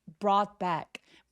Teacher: br처럼 되지 않도록 brought back라고 입술을 꾹 다물었다가 터트려내면서 소리 내 주세요. brought back 할 때 GH는 묵음입니다.